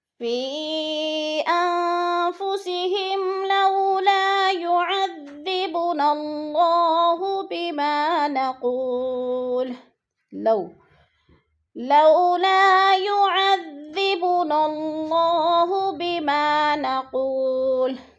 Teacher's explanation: لو پہ وہ لین ہے، وہ لین کو لمبا بھی نہیں کریں گے، جھٹکا بھی نہیں دینا